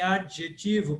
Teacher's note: a palatal que se escreve como J mas se fala como d j